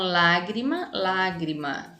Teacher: proparoxítona olha só a gente tem a antepenúltima é a sílaba mais forte Olha o acento tá na palavrinha na sílaba lá tá vendo